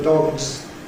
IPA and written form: dɒgz (dog's)